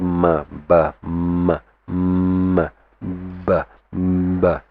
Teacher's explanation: they say the sound of the ba and ma, they come from the same makhraj. Okay, our lips. Okay, they come from the same makhraj, coming out from the lips.